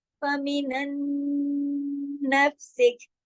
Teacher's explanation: नून साकिन के बाद नून मुशद्दद आ गया ना, तो यहाँ पे इदगाम हो रहा है, यहाँ पे गुन्ना अकमल होगा, बड़ा गुन्ना होगा